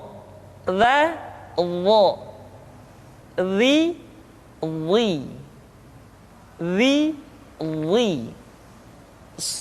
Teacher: pengucapan huruf dha diucapkan dengan menyentuhkan ujung lidah dengan dua gigi seri bagian atas